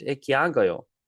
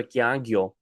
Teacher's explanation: Some dialects gayo becomes gyo, by the way.